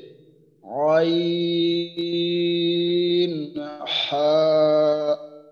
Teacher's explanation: দুই নম্বর মাখরাজ হলকের মাঝখান হইতে